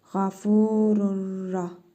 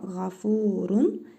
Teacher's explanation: Nun hərfini tələffüz etmirik. Ra hərfini isə şəddəli oxuyuruq.